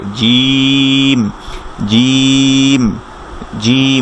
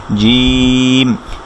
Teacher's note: জিম মানে এরকম সাউন্ডটা থাকবে না। জিম, যথাসাধ্য আমরা বাতাসটাকে আটকানোর চেষ্টা করব এবং এটা জিহ্বার মাঝখান থেকে উচ্চারিত হবে